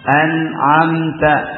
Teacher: Nun di ujung lidah, ain di tenggorokan, ya kan? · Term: nun sukun ketemu ain